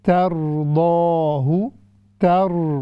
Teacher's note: را یہ موٹی پڑی جائے گی چونکہ را سے پہلے مفتوح حرف ہے